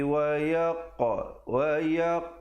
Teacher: ada pantulan di situ, qalqalah sughra di situ.